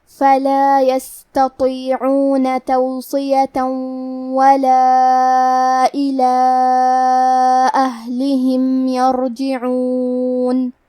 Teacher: حرف اللام اور ہا کے نیچے زیر ہے تو ہم یہ دونوں زیر کو برابر سے ادا کریں گے. کلمت یرجعون میں حرف الراء کا حکم ہے تفخیم. ہمیں حرف الراء کو موٹی آواز میں پڑھنا ہے · کلمت اہلہم میں ہا ساکن ہے تو ہمیں ہا کو ظاہر کرنا ہے